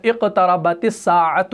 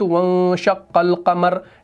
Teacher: اس وجہ سے شمسی کے وقت ملانے کی صورت میں الف لام دونوں کو نہیں پڑھا جاتا، اور قمری کو ملانے کی صورت میں الف کو نہیں پڑھا جاتا، لام کو پڑھا جاتا ہے